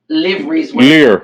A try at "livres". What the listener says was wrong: Lire. Yeah, lire. You don't pronounce the V.